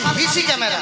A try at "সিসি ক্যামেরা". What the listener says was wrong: ও মাসি, হিসি ক্যামেরা না, ওগুলো বলো সিসি ক্যামেরা।